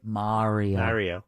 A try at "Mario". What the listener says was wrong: You put a W in there somewhere. Yeah, but then you slip down in this Mario thing, and it just is nails on a board.